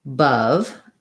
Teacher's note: I like using the word above as an example because I have two different spelled letters in this word, but it's they're both schwas. So I have an unstressed schwa, and then a stressed schwa, bov. So it sounds like bov, same vowel, but this one is short and this one is long.